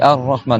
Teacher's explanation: le Ra, c'est le bout de la langue, ici, qui va taper sur la chair derrière les dents.